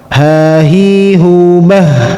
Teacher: Tenggorokan yang bawah yang paling dasar ini tanpa hambatan.